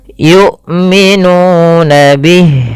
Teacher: Jahar itu tertahannya nafas, syiddah itu tertahannya suara, maka harus dua-duanya, yu, tertahan nafas dan tertahan suara. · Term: jahar dengan syiddah